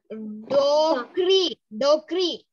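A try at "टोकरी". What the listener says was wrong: That is not da, it is ta. Tokri. First ta. Tokri.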